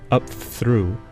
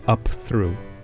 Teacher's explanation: I've both heard and said the mispronunciation up through for up through. that pronunciation fricativizes the plosive p as it assimilates to the fricative th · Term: fricativization